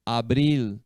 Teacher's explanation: o l no final a língua vai lá no céu da boca no palato